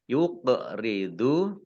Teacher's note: qaf sukun, bacaan qalqalah dibaca memantul, ditampakkan pantulannya